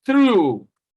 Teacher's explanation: The sound here, through, all right, is the voiceless dental sound.